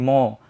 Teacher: যেমন আমি যখন বলি ম, আপনি ফিল করেন আপনার নাক দিয়ে কিন্তু বাতাস বের হচ্ছে, নাসিক্য প্রভাবিত হচ্ছে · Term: নাসিক্য ব্যঞ্জন